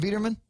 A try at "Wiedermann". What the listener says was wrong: Wiedermann. Wiedermann. It's too German with this hard W.